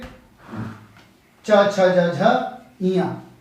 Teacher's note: तालव्य मतलब जब आपकी जीभ आपके दांत के नीचे जो तालु बना है वहां चिपक जाए, तालव्य। जैसे हम बात करेंगे च छ ज झ इया, बाबा जीभ नीचे भागेगी।